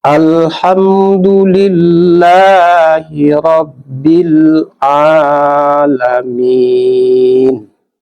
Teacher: Ya, di sini sebelum lafaz jalalahnya ada huruf yang berbaris di bawah. Oleh sebab itu kita baca tarkik atau tipis.